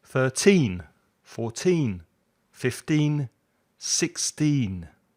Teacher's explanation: With the teens, put the stress at the end.